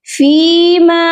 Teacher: وَلَقَدْ مَكَّنَّاهُمْ فِيمَا، اب فیما کے اوپر دیکھیے مد ہے، یہ مد منفصل ہے اور اس مد کی پہچان ہے کہ یہ مد ورڈ کے اینڈ پر آتی ہے اور اس مد کو صرف 3 الف تک لمبا کر کے پڑھا جاتا ہے